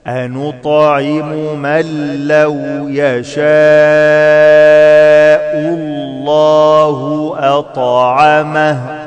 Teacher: بدخل النون في اللام إدغام بدون غنة أنطعم من لو يشاء الله أطعمه أط قلقلة.